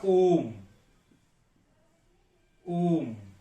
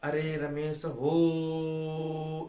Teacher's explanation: प्लुप्त स्वर जिनमें तीन मात्रा लगती है